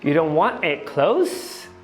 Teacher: Ele também não fala esse D do final e eu percebi que ele desvozeia também esse Z. Então, em vez de closed, que seria a pronúncia preconizada, a gente tem um apagamento do D mais um desvaziamento do Z, que vai virar close.